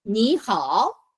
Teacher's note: The second rule that you have is basically when you have 2 third tones together. Okay, if the first word is a third tone and followed by another third tone, then the first third tone is expressed as 3-5, which is the second tone.